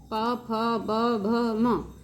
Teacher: प फ ब भ म, ये 5 व्यंजन ओष्ठ से बोले जाते हैं, अतः ये ओष्ठ वर्ण कहे जाते हैं।